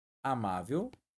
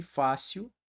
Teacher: ambas possuem a sílaba tônica né posicionada na penúltima sílaba da palavra e são paroxítonas família veja só terminadas em L amável terminou